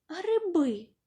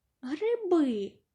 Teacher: ненаголошений звук и у вимові наближається до е